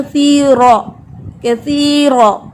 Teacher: آگے ہے کثیرہ, را ہیوی ہے